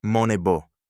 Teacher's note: The first person ending is contracted; the tense sign and the ending fuse, and bi plus o gives you the long o of the first form